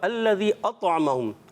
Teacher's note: अतअम में क्या होगा, कलकला यानी आवाज़ लौट कर आएगी